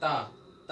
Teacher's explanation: ता एकदम आके जीभ को, दांत को छूती है, वहीं रुक जाती है, फिर छोड़ते हो तो वायु बाहर निकलती है। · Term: दंत व्यंजन